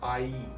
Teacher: the vowel sound is what we call a diphthong which is where it starts at one sound and ends at another